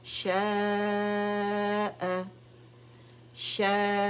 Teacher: 5 count کے لیے مد متصل واجب ہم نے اسٹریچ کی